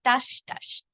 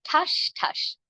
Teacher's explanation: সমস্যা যেখানে হয় ঠাস ঠাস বলতে গিয়ে অনেকের মহাপ্রাণ ধ্বনিতে সমস্যা থাকে এবং ঠাস ঠাস না বলে বলেন টাস টাস। এটি কিন্তু টাস টাস নয়, এর সঠিক উচ্চারণ হবে ঠাস ঠাস।